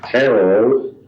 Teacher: it starts off sort of high and then goes down and then creeps up again. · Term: intonation pattern